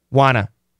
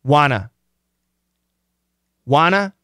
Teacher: that N is a strong sound, so we can cancel the T and we get wanna.